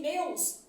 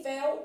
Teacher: em meus o e é fechado e em vé o e é aberto